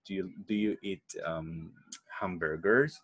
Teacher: to ask a yes/no question your voice rises that means that it goes up as we said on the last stressed word